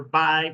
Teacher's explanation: then you have B, where both of your lips touch